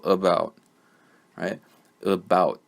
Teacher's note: so I try to pronounce the second syllable in that word this word has two syllables but the first one I just moved through real quick